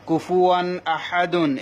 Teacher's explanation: দেখুন কুফুয়ান তানবিনের পর অক্ষর কি হামজা, এই যে আলিফটা নিয়ম বলেছি, এখানে নিয়মটা বলবো না। তানবিনের পর অক্ষর কি হামজা, তাহলে দেখুন এই যে হামজা, হামজা আসার কারণে তানবিনটা গুণা করা হবে না।